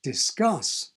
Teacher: the /s/ was able to exert its influence and make the c sound like a g.